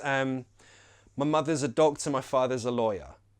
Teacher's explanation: Notice that the schwa is just everywhere.